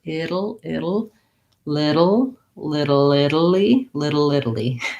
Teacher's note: that flap T sounds more like a D, and that syllabic L